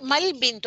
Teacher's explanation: ما ال بنتو نہیں پڑھا جاتا، حمزۃ الوصل آتا ہے